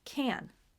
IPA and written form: ˈkæn (can)